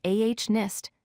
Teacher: We write H-O-N-E-S-T, but we pronounce it as ah-nist, dropping the H sound at the beginning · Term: silent H